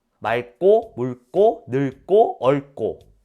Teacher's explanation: 어간말의 리을 기역은 기역 앞에서 리을로 발음한대요.